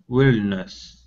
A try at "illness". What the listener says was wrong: Okay, so there isn't a W there, so you're trying to say willness. Okay, so take off that W. It's illness.